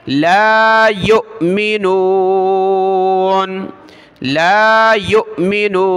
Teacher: हमज़ा साकिना है, झटका देंगे, वाव को नहीं पढ़ना, या हमज़ा पेश यो, या को हमज़ा के साथ मिलाया।